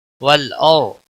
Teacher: را ساکن سے پہلے زبر ہے اس لیے را ساکن موٹا پڑا جائے گا. لام کو ہلانا نہیں.